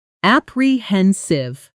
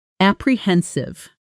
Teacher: The stress is on the third syllable.